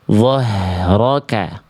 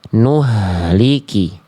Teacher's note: H besar dirasakan dari tenggorokan paling pangkal